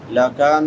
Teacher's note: لا يحل لکن لکا کاف باریک ہے، لکن نون مشدد ہے، شد والا نون ہے، غنہ ہوگا ایک الف کی مقدار کے برابر، آواز کو ناک میں چھپا کر ادا کریں گے